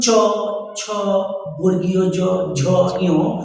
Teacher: জিহ্বার যে মধ্যভাগটা, সেই জিহ্বার মধ্যভাগটা আমাদের উপরের যে তালু অর্থাৎ খাঁজ কাটা যে অংশটা রয়েছে, সেই জায়গাটাকে স্পর্শ করে উচ্চারিত হয়। তাই এটাকে বলছি আমরা তালুতে ছুঁয়ে উচ্চারিত হচ্ছে বলে এটাকে বলা হয় আমাদের তালব্য বর্ণ।